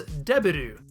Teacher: there is no “v” sound in Japanese. “B” is used in its place.